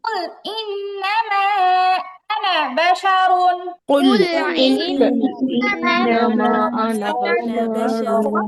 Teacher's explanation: আনা টানা যাবে না, আনা শব্দে কোনো টান নেই।